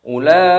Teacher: Ulaika mad wajib muttasil dipanjangkan 6 ketukan.